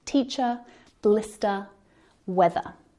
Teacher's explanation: we don't pronounce the ER R sound at the end of words like teacher blister weather so that final sound is a schwa the ER is silent unless the word following starts with a · we don't pronounce the R sound at the end of words